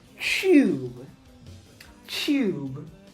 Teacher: there is actually an invisible Y sound in here for British and Australian English speakers. And so what happens when there's a T and a Y is that they turn this into a CH sound.